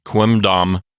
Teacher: Quimdam is awkward because you're putting your two lips together to say the M sound. Then you have to fully release your lips to make a D sound.